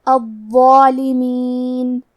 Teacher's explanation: ضو حروف التفخیم میں سے ہے تو ہم ضو کو اور اس کے بعد مد الف کو دونوں کو تفخیم سے مطلب بھاری آواز میں ادا کریں گے